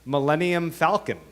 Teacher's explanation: it has two unstressed syllables right next to each other which you can't do in iambic pentameter